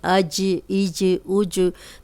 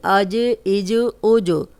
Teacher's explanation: جب ہم جیم کو ادا کرتے ہیں تو اس میں چی کی آواز نہیں ہے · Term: کلیئر جیم کی آواز